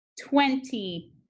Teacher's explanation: The first syllable is accented.